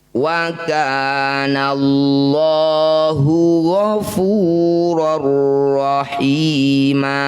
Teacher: Idgham artinya masuk atau memasukkan ya. Fathah tanwin masukkan pada huruf ro. Ghafurur, jangan lupa bila gunnah tanpa berdengung ya, tanpa ditahan di sini. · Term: idgham bila gunnah